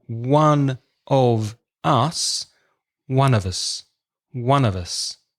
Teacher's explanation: if you listen very carefully, it almost sounds like one complete word. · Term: weak pronunciation